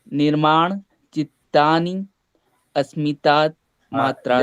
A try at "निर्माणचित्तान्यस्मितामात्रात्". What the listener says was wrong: निर्माण चित्तान्यस्मिता मात्रात। आप उसको तोड़ रहे हैं व्याकरण से। मात्रात, मात्र, मात्र शब्द से पंचमी का एक वचन, रामात, मात्रात, बालका, चला गया।